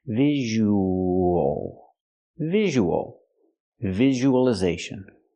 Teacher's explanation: we have the long oo sound plus the O so we have the w w sound in the middle linking the vowels